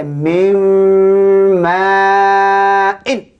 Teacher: Tidak boleh baca min. Dia baca mim ma'in. Tutup mulut.